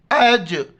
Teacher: यहाँ पर कलकला करना है, झटके के साथ पढ़ना है।